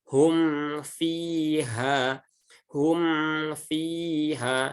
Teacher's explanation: Nah, ini kan mim sukun bertemu fa. Maka jangan sampai bibirnya tidak rapat karena kita ingin cepat-cepat mengucapkan huruf fa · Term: izhar syafawi